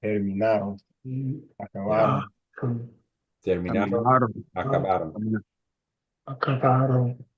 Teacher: focus on not putting the emphasis on the O-N at the end